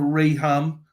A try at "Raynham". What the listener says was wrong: Raynham. The H is silent.